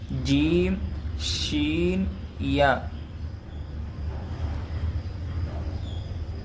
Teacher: زبان کا جو درمیانی حصہ ہے، بیچ کا حصہ ہے، اور تالو کے ملنے سے ادا ہوتے ہیں۔